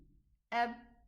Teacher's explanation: Total termination of the sound. The sound suddenly stops. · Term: ba sukoon